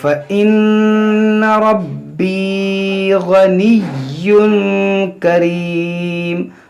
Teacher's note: یہاں دیکھیں نون مشدد ہے, اس میں غنہ کریں گے, را پر زبر ہے موٹا پڑھیں گے, یہاں پر یا مدہ ہے اس کو کھینچیں گے. یہاں دیکھیں یا مشدد ہے اور غین حروف مشتالیہ ہے اور تنوین کے بعد یہاں پر کاف ہے, تو ان سب کا لحاظ رکھ کر آپ پڑھیں.